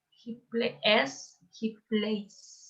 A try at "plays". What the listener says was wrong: It's a Z. Plays. Plays.